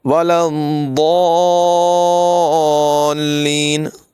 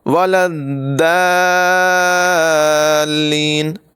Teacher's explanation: جی ہاں، یہ والی آیت غیر المغضوب علیہم ولا الضالین، اس آیت میں بہت سارے لوگ غلطی کرتے ہیں، ضاد جو ہے اس کو دال بنا دیتے ہیں۔ یاد رکھیں، ضاد کا مخرج زبان کے کنارے کو اوپر کی داڑھوں کی جڑ سے ملا کر ادا کرنا ہے۔ اس کی آواز پر ہوگی، بھاری ہوگی۔ یہ حروف مستعلیہ میں سے ہے، اسے باریک نہیں پڑھنا، اور اگر اسے باریک پڑھا گیا تو یہ دال ہو جائے گا۔